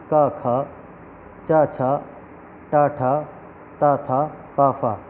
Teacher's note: इनमें कोई भी वाइब्रेशन नहीं है, यानी बोलते समय जिनमें वाइब्रेशन है वो सघोष है और जिनमें वाइब्रेशन नहीं है वो अघोष हैं।